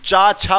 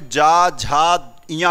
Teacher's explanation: चा छा बोला तो कंपन नहीं हुआ, रख के यहां देख सकते हो, जैसे ही आपने जा झा इया बोला तो यहां कंपन होने लगा, यहां कंपन होगा, यहां गूंज यानी वाइब्रेशन होगा, वाइब्रेशन, ठीक है।